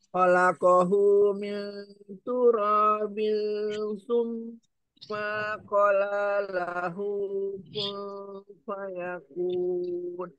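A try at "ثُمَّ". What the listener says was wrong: Afwan, di kata summa, mimnya dia pendek, o-nya yang panjang. Tapi mim tasjidnya kurang ditahan.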